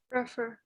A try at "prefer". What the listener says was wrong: Prefer. So the pre is not stress. You don't say prefer, but prefer.